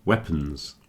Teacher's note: And again, you see the O is contracting a bit. Weapons. Not saying weapons, I'm saying weapons.